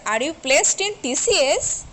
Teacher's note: if you put stress on TCS, are you placed in TCS? That means I want to know, are you really placed in TCS or some other organization? So here organization is most important to me.